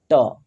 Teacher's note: आपके दांत के नीचे जो मोटा वाला मसूड़ा है वहां पे ट बोलेंगे तो आपकी जीभ जाके टच होगी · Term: मूर्धन्य